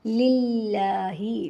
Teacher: للہ، لام زیر لام لل، لام کھڑی زبر لا، للہ زیر ہی، للہ میں لام کو ہم اللہ تعالیٰ کے لام کو باریک بھی پڑھیں گے اس لیے کہ لام کے نیچے زیر ہے اور لام پر کھڑا زبر ہے تو 1 الف کے برابر لمبا کریں گے۔